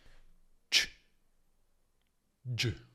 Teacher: Si articolano nello stesso punto di sh, quella zona tra gli alveoli e il palato duro, con le labbra leggermente protruse. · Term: affricate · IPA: /tʃ/ e /dʒ/